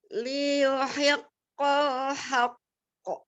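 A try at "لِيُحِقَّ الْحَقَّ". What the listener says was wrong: Ini Anda nggak dengar lam sukunnya. Coba lagi.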